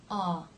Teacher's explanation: To make this sound, the jaw drops, but the tongue raises a bit. Ah. Not just the front or the back, but the whole thing really. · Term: ah as in law